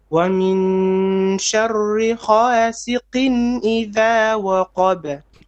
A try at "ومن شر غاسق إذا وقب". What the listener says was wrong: Okay, your ghain sounds more like a kha. Okay, so ra, rasiqin idha waqab.